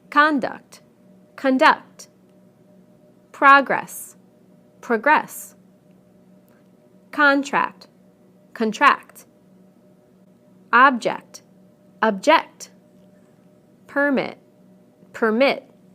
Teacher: We stress the first syllable in the nouns and the second syllable in the verbs.